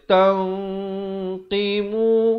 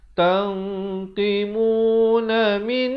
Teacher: Tapi bila datang qaf, disamarkan nun itu di antara huruf qaf. Dan dibacakan dengan tebal kerana qaf bersifat isti'ala. Dia baca tanqimu, 2 harakat.